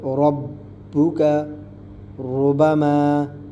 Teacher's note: را کے اوپر زبر یا پیش ہو تو را کو موٹا پڑھیں گے